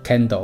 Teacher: 舌后呢向上拱起，触及软腭，后排臼齿与齿龈，然后软腭提升，阻绝口腔与鼻腔的通道，不振动声带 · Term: 无声的气音